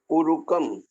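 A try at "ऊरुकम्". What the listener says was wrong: See, Dirga U.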